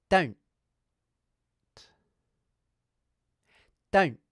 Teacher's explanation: I'm doing the vowel sound and the /n/ consonant quickly, then pausing momentarily before proceeding to the /t/ consonant. · Note that I'm clipping the /n/ consonant with a glottal stop.